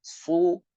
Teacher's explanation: Su dengan menaikkan pangkal lidah. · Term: Su tebal